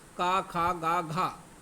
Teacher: तो जो का निकलता है वो सीधा आपका कंठ से निकलता है दोस्तों। आपका कोई भी इसमें और भी भाग नहीं लेता, ना ही आपकी जीभ लेती है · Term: का वर्ग